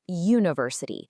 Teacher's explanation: Even though it starts with the vowel letter U, the sound you hear is a consonant Y